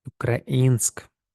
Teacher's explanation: тут у нас наголос на і